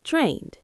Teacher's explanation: Soft D at the end, not drain-ed, just drained.